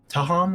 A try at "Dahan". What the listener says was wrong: Dahan with a D.